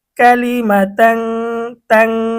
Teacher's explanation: এখানে আমি গুণনা করতেছি, কারণ কি, এখানে তানবিন আসছে, তানবিনের পরে তা আসছে।